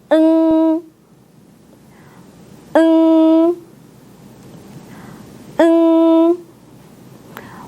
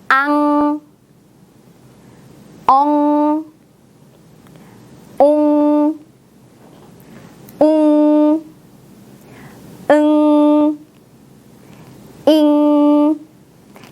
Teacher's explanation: 여러분의 혀 뒤쪽을 부드러운 입천장에 대고 입을 벌리지 않고 닫은 상태 그대로 유지하면 됩니다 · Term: 받침 응